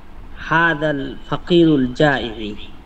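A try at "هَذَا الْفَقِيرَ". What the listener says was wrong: ফাকিরু কেন হলো?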